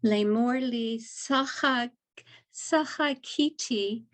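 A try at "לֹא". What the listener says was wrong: Low, here, low, not Lee, low.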